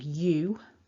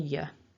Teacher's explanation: There's definitely that emphasis by going strong, you rather than y.